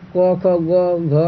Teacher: घ यानी कंठ से आवाज निकल रहा है